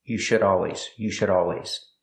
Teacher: The D in should is a fast D. It's between vowels.